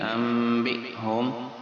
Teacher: یہ حمزہ ساکن ہے جھٹکا دیں گے